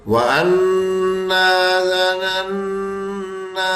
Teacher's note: نون مشدد کا قاعدہ لگ رہا ہے کہ وہ غنہ کرنا ہے